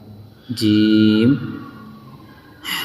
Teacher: جیم یہ زبان کے بیچ اور اوپر کے تالوں سے نکلتا ہے